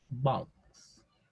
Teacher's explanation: La pronunciación es más abierta que una O en español. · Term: La O